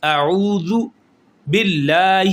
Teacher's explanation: زی کی آواز نہیں آنی چاہیے، زال کی آواز آئے۔ زال ادا ہوتا ہے اوپر والے دانتوں کے کنارے جو ہیں، اور زبان کے کنارہ اوپر والے دانتوں کے کنارے سے ٹچ ہوگا تو یہ نکلے گا زال